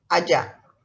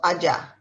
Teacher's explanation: you remember i don't pronounce the r it's ja sound